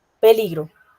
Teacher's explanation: yo también podría decir peligro y el acento está en el li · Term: acento prosódico